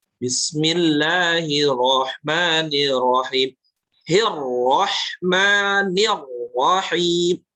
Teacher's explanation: ketika ada ro tasydid, maka harus terasa tekanannya ya